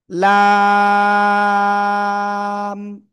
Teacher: জিহ্বার আগার কিনারা এপাশ এপাশ যে কোনো পাশ হলে হতে পারে। জিহ্বার আগার কিনারা উপরে মাড়ির দাঁতের গোড়ার সাথে লাগাবো, এপাশ এপাশ যে কোনো পাশ লাগিয়ে